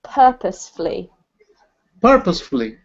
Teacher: the beginning of the word is emphasized